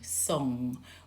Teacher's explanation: You feel the back of your tongue lifting to touch the back of the roof of the mouth, yeah, the soft palate. Song, song, that's an NG.